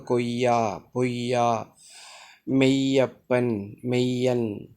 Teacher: யகர மெய்யானது அரை மாத்திரை அளவில் ஒலிக்கக்கூடியது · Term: யகர ஒற்று